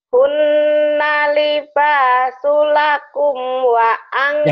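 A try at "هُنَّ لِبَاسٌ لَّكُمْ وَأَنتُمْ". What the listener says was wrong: Jangan buru-buru. Jangan buru-buru. Hunna libasulakum. Jangan buru-buru tasjidnya.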